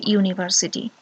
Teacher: university starts with yu sound which is a consonant sound